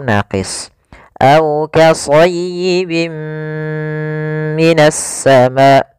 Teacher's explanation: amun yaitu ditandai dengan dengan adanya tanwin bertemu dengan huruf mim cara membacanya masukkan tanwin ke huruf mim dan ditahan gunahnya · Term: Idgham maal gunah, idgham bi gunnah